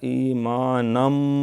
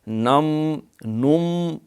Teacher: ادغام ہے تنوین کا میم کے اندر